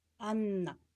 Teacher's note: Анна гэж хэлэхэд хэлний үзүүр дээд шүдний хөвчөнд буюу хатуу тагнаад хурц хилэгдэж байна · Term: хэлний үзүүрийн